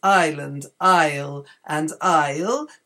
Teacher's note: in all three of these words Island Isle and Isle the S is not pronounced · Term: silent s